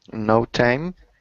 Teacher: just the rising intonation because it's a question